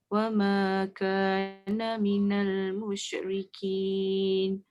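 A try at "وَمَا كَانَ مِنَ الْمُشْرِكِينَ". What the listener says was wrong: Shin sikit lagi.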